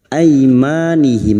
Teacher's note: fathah bertemu Ya Sukun kita lunakkan huruf Lin